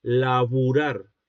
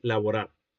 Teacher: Porque el argentino emplea la U, es decir, el cerrado posterior, en lugar de la O, en lugar del semicerrado posterior.